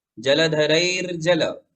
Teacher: र को आधा पढ़ेंगे जलधरैर और फिर ज जोड़ देंगे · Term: आधा र